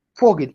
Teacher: la V del alemán suena como una F. Entonces, cuando veamos palabras como esta, Vogel, que significa pájaro o ave, Vogel, ahí yo no digo Vogel, sino que digo Vogel, porque esa letra suena como una F.